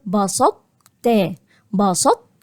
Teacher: على التاء يعني ايه هقول بسطت بسطت يبقى اكني هقول طاء لكن هي الطاء تحولت لتاء ولكن تبقى فيها صفه الاستعلاء · هعمل هستعلي بالطاء ولكن مش هقلقلها وبعد كده هروح رايح على التاء · يبقى أكني هقول طاء لكن هي الطاء تحولت لتاء ولكن تبقى فيها صفة الاستعلاء. يبقى هنا هبدأ أكني هقول طاء بدون قلقلة وبعد كده أخش على التاء، بسطت، بسطت، مش هقول القلقلة بتاعت الطاء. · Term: ادغام الناقص, الإدغام الناقص